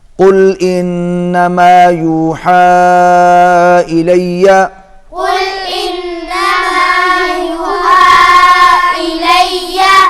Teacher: انما کو زیادہ لمبا نہیں کھینچنا۔